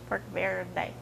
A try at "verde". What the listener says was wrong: Verde. You have to roll the R.